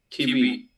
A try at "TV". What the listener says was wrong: Yeah, has dicho tuberculosis. TB, tuberculosis. You need to be very careful here. We pronounce like T, los dientes sobre el labio. Like V, V, V. Es como una F. Mira la F cuando te la F de español.